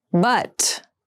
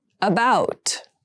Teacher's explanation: But has the more open sound and about has the more closed sound.